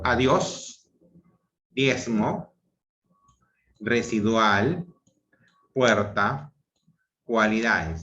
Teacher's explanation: En el caso de la creciente es cuando se presenta la secuencia vocálica, empieza con una vocal cerrada átona y termina con una vocal abierta tónica